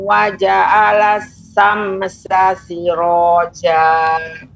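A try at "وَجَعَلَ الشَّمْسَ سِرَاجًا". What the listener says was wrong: Shinnya kurang Ibu. Shinnya kurang, tasydidnya waja'alas syamsa.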